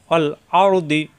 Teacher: জিহ্বার গোড়ার কিনারা উপরের মাড়ি দাঁতের গোড়ায়